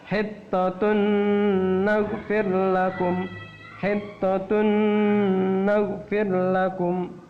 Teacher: Idgham bi gunnah artinya dimasukkan bi dengan gunnah, dengung, yaitu sebanyak atau selama 2 harokat, 2 sampai 3 harokat. Dengung itu artinya tahan, ya, tahan.